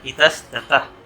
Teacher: विसर्ग के बाद में त रहे या थ रहे तो विसर्ग दंत सा में बदल जाएगा